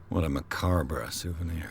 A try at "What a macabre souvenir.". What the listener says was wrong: He's even putting an extra letter in there. He's putting an R before the B. It's macabre.